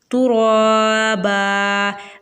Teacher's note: روا کے اوپر کھڑی حرکات ہے، 1 الف کے برابر کھینچ کے پڑھیں گے۔ با کے اوپر 2 زبر کی تنوین ہے، وقف کی حالت میں یہ بھی الف مدہ میں چینج ہو جائے گی تو دونوں کو 1 الف کے برابر کھینچ کے پڑھیں گے۔